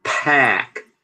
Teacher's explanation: Então, ó, pack. Então tem que aspirar e tem que abrir mais a boca.